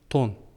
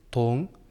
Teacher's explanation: Н дыбысын айтқан кезде тілдің ұшын тіс пен қызылиектің арасына тигіземіз. Ал ң дыбысын айтатын кезде тілдің артын таңдайға тигіземіз.